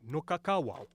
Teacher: with a voiced W in the middle and a voiceless at the end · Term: voiceless w